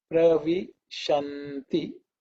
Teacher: sha, which is the palatal sha